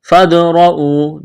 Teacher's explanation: فادرؤوا دال ساکن ہے، قلقلہ کریں گے